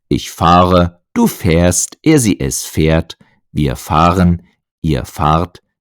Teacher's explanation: Das Verb fahren ist ein schönes Beispiel für den Wechsel von einem A zu einem A-Umlaut.